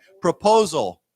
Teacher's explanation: remember the accent is on the second syllable, so it's proposal.